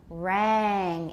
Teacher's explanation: Make it longer and watch that final velar nasal.